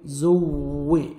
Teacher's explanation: زا کو زور سے پڑھیں گے اور واو مشدد ہے سختی سے ملائیں گے. زوے دیکھیں شد نہیں ہوگا تو پڑھیں گے زوے.